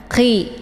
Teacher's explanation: ditekan sedikit kemudian kayak ada bunyi suara kayak ngorok gitu · khi ini khi letak posisinya di tengkerrokan bagian atas sejajar dengan huruf gha jadi khi ini ditekan ya dia ada bunyi e hamesnya khi